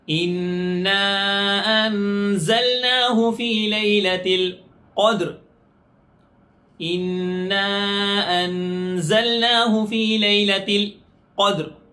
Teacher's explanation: اِنَّا أَنزَلْنَاهُ فِي لَيْلَةِ الْقَدْرِ اِنَّا أَنزَلْنَاهُ فِي لَيْلَةِ الْقَدْرِ. قاف سے ہے، قدر موٹے قاف سے، اس کو پر پڑھیں گے، موٹا پڑھیں گے